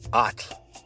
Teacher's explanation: you have to say the T and the L pretty much simultaneously. It's kind of a weird position of your tongue.